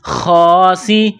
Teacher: لکنتم من خا کڑا زبر خا، خا کو موٹا کرنا ہے، سین میں سیٹی کی آواز پیدا کرنی ہے